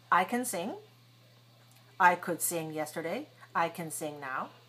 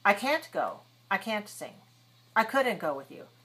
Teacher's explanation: could and can usually are short but the negatives are long